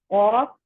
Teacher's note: آف جو ہے وہ نرم تالو کا جو نرم حصہ ہے اس طرف زبان اٹھتی ہے اس سے ٹچ ہوتی ہے